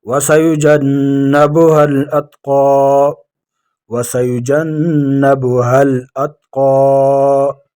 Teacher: نون مشدد ہے، ایک الف مقدار اس میں ٹھہریں گے۔